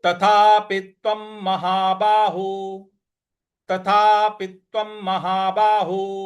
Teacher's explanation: देना है तो तथापित इस प्रकार से बोलना है तथापित्वम तथापित्वम व के ऊपर जो अनुस्वार है उसका उच्चारण हमें म ले आना है